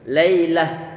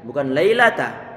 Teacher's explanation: waqafnya diganti dengan huruf ha yang disukunkan. Lailah, bukan lailata.